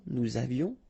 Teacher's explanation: final S not pronounced, and then little liaison